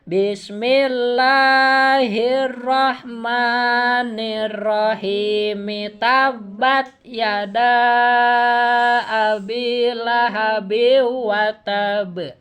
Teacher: Mi pada kalimat ar-rahimi itu mesti dibaca Bu ya, karena disambung.